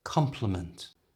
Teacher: compliment which is a polite expression of Praise is slightly stronger at the beginning